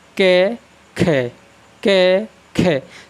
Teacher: का की अपेक्षा ख का उच्चारण करने पर अधिक हवा निकलती है